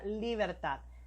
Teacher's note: Bien, y vamos con el último ejemplo del acento prosódico, que es la palabra libertad. La palabra libertad nos dice de que está su mayor fuerza en la última sílaba.